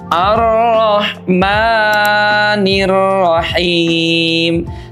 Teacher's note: Maka membaca arrahmani cukup memanjangkan satu alif dengan cara membuka alif kita dan juga menutupnya kembali. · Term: dua harakat